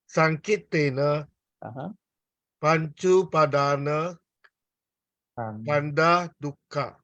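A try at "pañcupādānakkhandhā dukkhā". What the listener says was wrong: Okay, you said Panchupadan. Should be Panchupadana. See?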